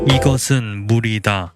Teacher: the coda of the word 물, meaning water, underwent resyllabification here. It is realized as a voiced alveolar flap rather than the lateral.